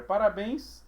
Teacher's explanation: Parabéns é oxítona né se eu separo aqui eu vejo que a tônica essa é a última